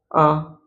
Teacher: जिसके उच्चारण में जो ह्रस्व स्वर की अपेक्षा समय को दुगना लगता है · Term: दीर्घ स्वर